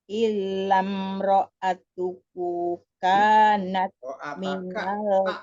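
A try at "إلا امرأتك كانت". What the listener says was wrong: Bukan tuk. Illam ro'ataka kanat.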